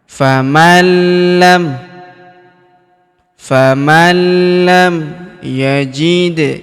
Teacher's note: Perhatikan huruf nun sukun bertemu huruf lam berharakat tasydid. Maka nun sukunnya melebur ke huruf lam yang berharakat tasydid. Kita tahan dan tekan.